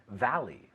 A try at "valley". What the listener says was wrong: La V otra vez. Y mira, no me dice valley. Valley. La V y la B en inglés son muy distintas. Valley. Mira, los dientes de arriba aquí.